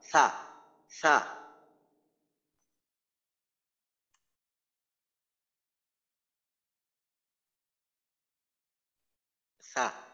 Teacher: রিখওয়া হলো আওয়াজ চালু থাকে আর আওয়াজটা নরম হয়। পুরো সিদ্ধার উল্টা।